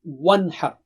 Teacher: Wow should be, pronounced wa while making your lips round and then open.